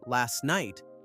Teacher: last night often loses the T sound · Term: connected speech